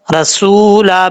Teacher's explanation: دو زبر کی تنوین کے بعد میم آ رہا ہے، تو غنہ کریں گے ایک الف کی مقدار